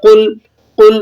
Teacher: لام کو یاد رکھیں، یہ حروف قلقلہ میں سے نہیں ہے